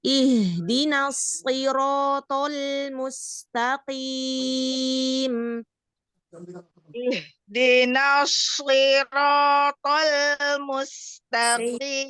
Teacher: Huruf H, walaupun dia bersukun, tapi nggak nyampe ke dada.